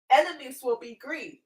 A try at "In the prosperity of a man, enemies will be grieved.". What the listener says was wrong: putting the wrong emphasis on that. In the prosperity of a man, enemies will be grieved.